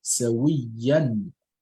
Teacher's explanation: You've got to do Idhar and pronounce the Tanween or the Noon Sakin clearly.